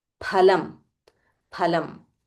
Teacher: In Sanskrit there is no fa. It is pha.